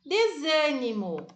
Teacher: o zan é a sílaba mais forte. Não é a última, não é a penúltima, é a antepenúltima. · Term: sílaba tônica